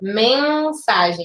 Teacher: esse N não tem som, ele só indica que esse E é nasal. Mensagem. Quando você fala assim, você sente o seu narizinho vibrar. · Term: dígrafo vocálico